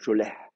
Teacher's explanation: fait entendre un tout petit A qui n'est pas une vraie voyelle et donc effectivement qui ne compte pas comme voyelle. C'est d'ailleurs pour ça que les massorettes le décalent légèrement en disant c'est entre le serré et juste avant d'attaquer le la guturale. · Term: demi a